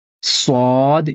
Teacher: سواد، اس کی آواز موٹی ہوتی ہے، سین کی جیسی نہیں ہوتی ہے